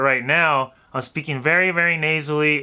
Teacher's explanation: the air is gonna go through kind of the nasal cavity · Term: nasal tone